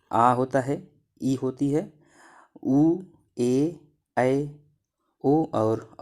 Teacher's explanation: इनका जो उच्चारण समय होता है ह्रस्व के अपेक्षा इनमें दोगुना समय लगता है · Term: दीर्घ स्वरों